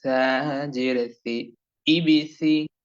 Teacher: সা অক্ষরের উচ্চারণ সঠিক এবং শুদ্ধভাবে জিহ্বার আগা সামনের উপরের দুই দাঁতের আগার সঙ্গে যুক্ত করে সুন্দর করে নরম করে।